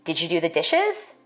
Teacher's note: For white speakers, we expect a rising tone in questions like these.